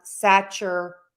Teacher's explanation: saturation again we're stressing right before the shun